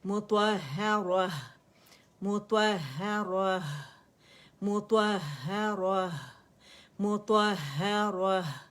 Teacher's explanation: تائے مربوطہ کی آواز جو ہے ہا سکون میں بدل جائے گی